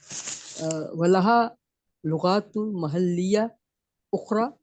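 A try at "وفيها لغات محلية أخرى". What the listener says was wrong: فی ہے نو نو وا سے شروع کریں نا، وا فی ہے. وفیہا لغات محلیۃ اخرى.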